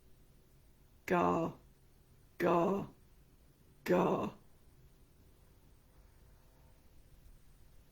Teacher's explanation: Your tongue is tight, your throat is tight, the whole resonant area is reduced because of this tightness.